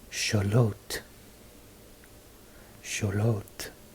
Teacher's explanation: See how the X makes a sh sound and the L is silent.